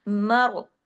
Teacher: रा मोटा, रा पे जबर नहीं है, लेकिन मीम तो खुद बारीक है, लेकिन उसका जबर जो है वो रा पे असर डाल रहा है।